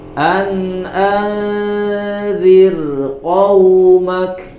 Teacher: karena ada di kata yang berbeda maka rnya tetap dibaca tipis ya tidak dibaca dengan tafkim